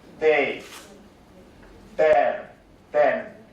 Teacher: the voice dental fricative pronounced as voice alveolar stop